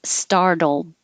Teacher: because the l and the d are in the same place you just hold it there